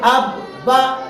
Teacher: तशदीद वाले हर्फ पर आवाज रोक के चला जाएगा